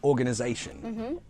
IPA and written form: ɔrgənəzeɪʃən (organization)